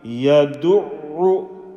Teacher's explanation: Now notice, I am not stretching the u. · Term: normal dhamma